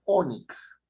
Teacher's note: la palabra ónix tiene su fuerza de voz en la o